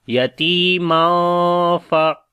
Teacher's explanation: مدہ ہے، میم کے اوپر دو زبرے ہیں یعنی تنوین ہے، تو اس کے بعد فا آ گیا حروف اخفا میں سے، تو اخفا کریں گے باریک والا